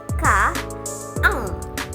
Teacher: bagian belakang lidah yang mendekati langit-langit lunak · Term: Velar